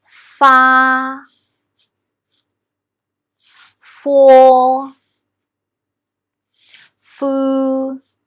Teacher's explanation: I put my upper front teeth on my lower lip slightly